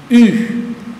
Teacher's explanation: eu faço a boca de U e sai o som de I, U. Esse é o som de Y em grego.